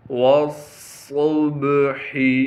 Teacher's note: تشدید ہونے کی وجہ سے تھوڑا سا ٹھہراؤ رکھیں گے اور صاد کو موٹا کر کے پڑھیں گے اور صاد میں سیٹی ادا کریں گے